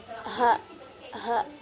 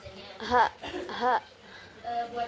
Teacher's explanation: Ee cara keluarnya itu ikhti kaki atau berupa gesekan. Kemudian posisi dalam pita suaranya itu ee mahmus tidak bersuara. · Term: huruf H